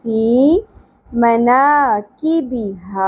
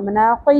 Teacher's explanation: کاف کو باریک پڑھنا ہے قاف کی طرح نہیں پڑھنا. مناقی نہیں پڑھنا.